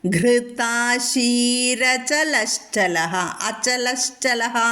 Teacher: അപ്പോൾ അവിടെ രേഭം വന്നു. വിസർഗത്തിന് മുന്നേ ഇകാരകവും വിസർഗശേഷം അകാരവും സ്വരാക്ഷരവും വന്നതുകൊണ്ട് അവിടെ രേഭം എർ വന്നു · ഗൃതാ ത പറയണം ഗൃ ഘോഷമാണ്